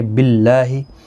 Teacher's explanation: اللہ کا لام اس زیر کی وجہ سے باریک پڑھا جائے گا